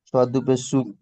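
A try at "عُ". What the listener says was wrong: না, এটা আইন আছে, আইন দু পেশ, আইন দু পেশ উন, আইন দু পেশ উন, রজ উন।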